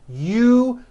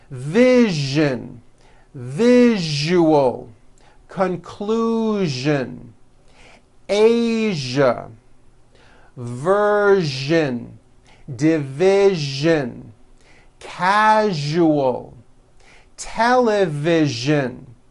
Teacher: That second syllable, ju, the one with the underline, needs to be voiced. Put your hand on your throat and feel for the vibration in the second syllable. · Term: voiced zh sound